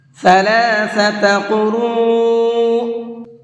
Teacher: ثلاثۃ قروء، قروء کے اندر قاف کو بھی اور را کو بھی دونوں کو منہ بھر کے پڑھیں گے، اور یہ بڑا مد ہے اس لیے را کو تھوڑا سا زیادہ کھینچ کر کے بھی پڑھیں گے۔